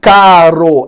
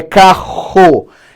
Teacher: RR aqui ó ele vai ser representação de um mesmo som ele é um único R um R mais longo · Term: R gutural